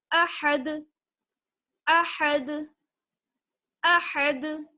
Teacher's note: अगर हम अहद क्या के ठहरेंगे तो फिर दाल को साकिन कर देंगे और दाल पर कलकला होगा